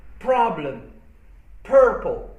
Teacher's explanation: in terms of stress placement, in the sense that stress always falls on the first syllable